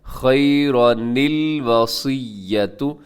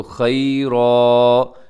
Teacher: لیکن اگر یہاں آپ وقف کرنا چاہیں خیرن پر تو یہاں وقف کی علامت جیم نظر آ رہی ہے آپ کو، اب یہاں وقف کریں گے تو خیرا ایسے وقف کر دیں گے، اور پھر آگے سے پڑھیں گے تو الوصیۃ للوالدین۔ لیکن اگر خیرن اور الوصیہ کو ملا کے پڑھیں گے تو یہاں چھوٹا سا نون لازمی پڑھا جائے گا جسے نون قطنی کہا جاتا ہے